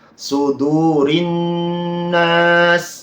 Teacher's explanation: nun tasydid lagi. Sudurin nas, didengungkan terlebih dahulu. Jangan tergesa-gesa.